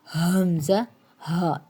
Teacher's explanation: تیسرا ہے حلق کا حصہ اقصی حلق، اقصی نیچے، ٹھیک ہے، سینے کی طرف والا جو حصہ ہے اس سے ادا ہوتا ہے حمزہ، ہا